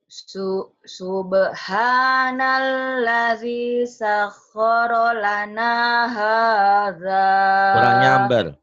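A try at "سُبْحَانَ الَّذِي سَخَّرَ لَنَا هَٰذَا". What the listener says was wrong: Kurang nyamber. Subhanalladzi sakhkhara lana hadza. Nyambernya kurang. Sakhkhara lana.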